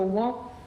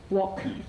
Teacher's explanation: with a k sound formed in the mouth but not released. So, wok not wok.